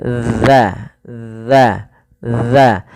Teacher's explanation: ujung lidah kita tempelkan daripada dua gigi kita